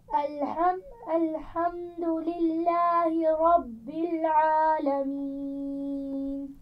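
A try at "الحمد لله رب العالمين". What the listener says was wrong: ہا کو بہت سختی سے نہیں پڑھتے. الحمد للہ، الحمد للہ.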